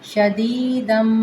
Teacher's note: دال دو زبر کو میم مشدد کے ساتھ ملائیں گے تو ہونٹوں کو بند کریں گے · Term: غنہ